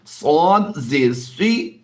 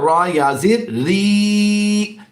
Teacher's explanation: صاد زیر سی یہ لمبا نہیں ہوگا، اور را یا زیر ری یہ لمبا ہوگا